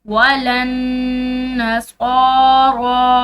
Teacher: नून मुशद्दिद है तो यहाँ पर गुन्ना होगा